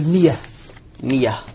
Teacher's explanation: الهمزة المفتوحة بعد الكسر يسمعها ياء